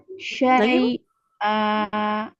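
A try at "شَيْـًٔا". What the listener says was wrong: Tapi jangan dijeda di ya-nya. Syai'a. Oke, sama tadi syai'a, diulang syai'a. Nah, jadi hamzahnya jangan cenderung ke ain ya.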